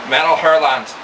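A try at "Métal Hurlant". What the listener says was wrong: Metal Hurlant. It's French, so that T is, for all intents and purposes, silent.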